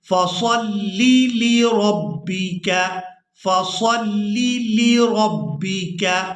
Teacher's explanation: دو لام ایک ہی جگہ پر جمع ہو گئے ہیں، تو ہم ان کو بالکل واضح کر کے ادا کریں گے